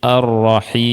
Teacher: Nah, inilah disebut dengan mad arid lisukun. Ada mad ya sebelumnya kasrah ketemu dengan huruf yang disukunkan karena waqaf. · Kita sukunkan huruf mim karena kita berhenti di sini. Karena orang Arab itu ya, dia tidak membaca dengan harokat ketika waqaf.